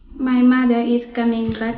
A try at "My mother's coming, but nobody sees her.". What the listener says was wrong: my mother's coming. My mother's coming, but nobody sees her.